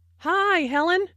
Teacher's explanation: notice that the I sound in high is extended to show that is very pleased to see Helen